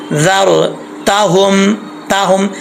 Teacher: ये ता 2 नुक्तों वाली है, इसको जो है बरीक पढ़ना है।